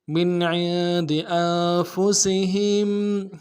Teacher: سین کی سیٹی باریک ہوگی، ہا کو میم ساکن کے ساتھ ملانا ہے